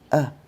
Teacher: So, then very often you'll notice they're little words, but things like uh and an instead of saying a or an, it'll be uh uh a very weak sound. It's actually a schwa.